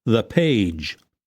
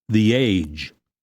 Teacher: before a vowel sound it is pronounced with the E sound, and then links very easily with the following vowel sound